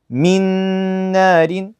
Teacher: I basically merge the noon into the other one, and I pronounce the second letter, which is the noon here.